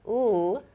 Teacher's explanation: the ending sound, l, requires vocal cord activation. So I'm using my vocal cords to make a l sound here. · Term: voiced sounds